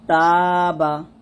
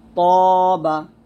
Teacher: তাটা পাতলা হয় আর তটা মোটা হয়